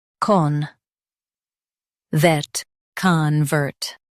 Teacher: Stress vert and keep con soft.